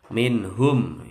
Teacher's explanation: idhar halqi, nun sukun ketemu ha, nggak boleh dengung. Ya, minhum, mim sukun ketemu alif, bacaan idhar syafawi, nggak boleh dengung juga.